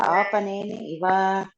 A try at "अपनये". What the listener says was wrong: Apanaye iva, not apan.